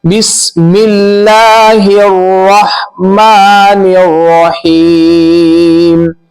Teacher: ہاں کو رو سے ملائیں گے، یہ الف اور لام جو ہے بیچ میں اس کو نہیں پڑھیں گے